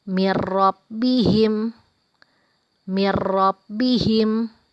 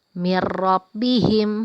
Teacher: ada nun mati bertemu dengan huruf roh dibaca tidak dengung atau pendek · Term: idgham bilagunnah